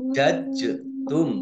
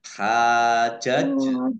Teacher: jim sukun bacaan kolkolah dibaca memantul